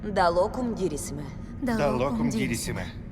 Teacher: Another part that stands out that's definitely very Ukrainian is, of course, that beautiful Slavic L, which, of course, has no place in Latin, which is that la locum.